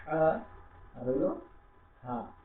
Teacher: যার ফলে দুইটা শব্দ মিলে গেছে, কিন্তু আপনাকে খেয়াল করতে হবে যে এই হাটা করবো হলো কি দিয়ে, হ্যাঁ, হালকা হ দিয়ে, আর এটা গলা থেকে নরম হওয়া। এটা ফ্যাস ফ্যাসা একটা শব্দ দিবে